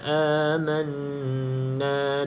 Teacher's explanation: Nun yang bersabdu pastikan dengung dua harakat